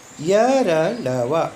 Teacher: इन व्यंजनों के उच्चारण में मुंह न पूरा बंद होता है न पूरा खुला रहता है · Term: अंतस्थ वर्ण